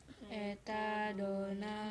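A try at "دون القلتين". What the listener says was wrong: dunal bukan donal bebek, dunal eta dunal kullataini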